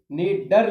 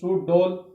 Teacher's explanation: जीभ की जो आगे की जो नोक होती है प्यारे दोस्तों वो हमारे कठोर तालु को स्पर्श करती है और झटके से वापस आती है। इस प्रकार से ये उत्क्षिप्त व्यंजन बोले जाते हैं जिसको ताड़नजात व्यंजन भी कहा जाता है।